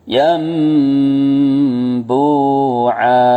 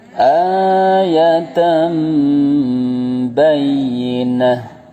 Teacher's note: Iqlab itu secara bahasa artinya mengganti suara nun sukun menjadi mim sukun disertai dengung. · Yan bu'an menjadi yam terus disertai dengung.